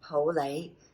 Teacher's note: Both are mid-rising, Pou Lei